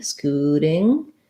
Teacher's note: it's going to be a flap. So it's going to sound a little more like a D, scooting. And then we have our NG sound there.